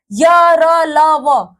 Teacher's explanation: य, र, ल, व कहीं पे भी पूरे तरीके से छू नहीं रही है